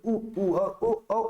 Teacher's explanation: हमारे होठ क्या हो गए वृत्ताकार हो जाते हैं उस समय जिन स्वरों का उच्चारण होता है उसको वृत्त मुखी स्वर कहा जाता है · उ और ओ उच्चारण करते समय हमारे मुख क्या हो गए हैं, वृत्ताकार हो गए हैं, तो ये ध्वनि क्या है, वृत्ताकार कहलाएंगी।